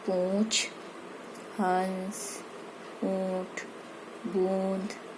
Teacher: इसका उच्चारण करते समय हवा नाक और मुंह दोनों से निकलती है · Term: अनुनासिक